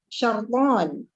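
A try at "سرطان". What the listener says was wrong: Bukan dengan shin, tapi sin.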